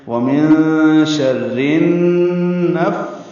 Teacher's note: نفاثات نون کو فا سے ملائیں گے, فا کے اوپر کھڑا زبر ہے, 2 حلقات لمبا کریں گے, تا کے اوپر بھی کھڑا زبر ہے, 2 حلقات لمبا کریں گے